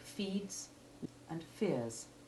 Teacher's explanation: there is no insertion of a short e3 simply the addition of the hard s